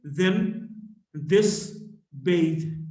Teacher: voiced, dental fricative, then, this, bathe